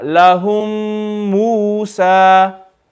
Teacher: We're reading the first mim, the mim sakin, we're going to read it with ghunna.